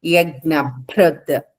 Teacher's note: భ మహాప్రాణం అమ్మ గట్టిగా పలకాలి